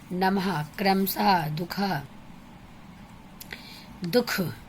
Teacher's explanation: उच्चारण में आधे ह का उपयोग होता है, पूरा ह नहीं होगा, आधा ह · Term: विसर्ग